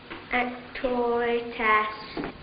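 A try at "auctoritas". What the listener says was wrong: Not ass. Arse. Lord knows you should be able to pronounce that.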